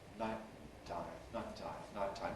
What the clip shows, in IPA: ˈnaɪʔtaɪm